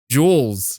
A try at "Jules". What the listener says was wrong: You're saying more of an O. Like you're like Jules.